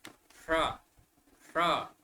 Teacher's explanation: जीभ को ऐसे ऊपर की ओर करके बोलेंगे, अपने आप मूर्धन्य ध्वनि निकलेगी।